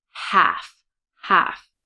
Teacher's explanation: And notice on half that the L is silent. It's not half.